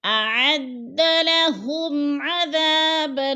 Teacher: اعد لہم عذاب، میم ساکن کے بعد عین حرف حلقی میں سے آ گیا ہے تو ادھر اظہار شفوی ہو رہا ہے، ہم نے غنہ نہیں کرنا، لفظ کو صاف صاف ظاہر کر کے پڑھنا ہے